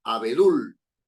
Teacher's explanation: Sílaba tónica, dul, es la última. Es una palabra aguda, pero no lleva tilde porque termina en L.